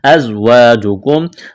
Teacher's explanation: زا میں سیٹی کی آواز پیدا کریں گے.